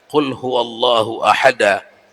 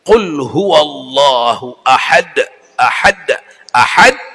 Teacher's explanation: Harus nampak di situ matinya dal. Dan harus setelah mati, qalqalah kan begitu, setelah mati setengah hidup. Setelah dia dibikin mati, setengah hidup lagi dia.